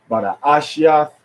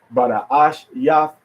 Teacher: Sometimes when you read it, we read it with more of a Spanish, not a Spanish accent, but a Spanish style, because we put the accent on the next to the last syllable